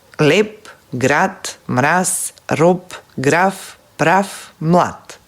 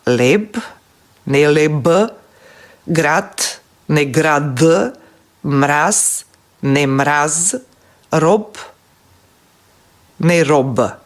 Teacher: На крајот од зборот, звучните согласки се изговараат беззвучно, но ги пишуваме звучните. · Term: обезвучување на согласките